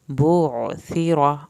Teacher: بعثر عین کو حلق سے پڑھیں، ثا کو زبان کی نوک سے ادا کریں، را کو پر کرنا ہے